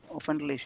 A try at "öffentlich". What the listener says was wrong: Umlaut. Öffentlich.